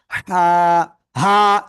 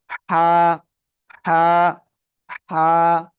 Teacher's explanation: গলাটা চেপে মুখ দিয়ে হালকা বাতাস বের করে আমরা এক আলিফ টানিয়া উচ্চারণ করব